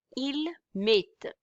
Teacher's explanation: Ending ENT, we wouldn't pronounce it